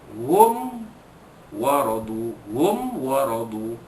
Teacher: dinyatakan mim mati bertemu dengan waw tanpa dengung. Hum waradu an, waradu an, ra dibaca pada atas dibaca tebal, tafkhim. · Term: izhar syafawi